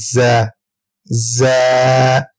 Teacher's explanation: زبان کی نوک اور دونوں دانتوں کے اندرونی کنارے سے ہم ز کو ادا کریں گے. ز ز یہ سیٹی والے حروف، ان کو ہم سیٹی والے حروف بھی کہتے ہیں.